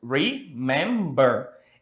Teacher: And the stress is on the second syllable. Então, elas têm 3 sílabas e a tônica está na segunda sílaba.